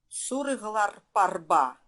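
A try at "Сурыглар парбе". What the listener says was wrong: Сурглар парбе. Не открытое А. В русском языке открыто нормально. Но здесь нужно их немножко приглушить. Парбе. Парбе. Вот этот Б, второй слог, он там больше, не больше, а тяготение к Парбе. Не совсем но тяготение от А к да.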